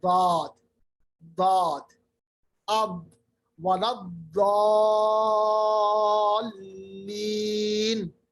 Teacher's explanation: اب ولا الضالین، داد اس کو کہتے ہیں صفت استطالہ، کیونکہ داد جو ہے یہ کروٹ سے لے کے پورے تواہن کے جڑ تک پورا پڑا جاتا ہے ایک سائڈ میں، اسی لیے یہ لمبا پڑا جاتا ہے. یعنی عام حرف اگر ہم مثلا 1 سیکنڈ میں پڑھتے ہیں، اس کو 1.5 یا 1.7.5 یعنی سیکنڈ میں ادا کرنا ہے.